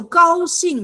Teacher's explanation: 高兴, surprise, surprise, is first tone and fourth tone